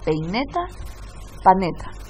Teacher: el diptongo EI se eliminó y se cambió por otro sonido que no estaba dentro de ese diptongo. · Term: coalescencia vocálica